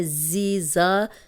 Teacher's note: زا سیٹی والا ہے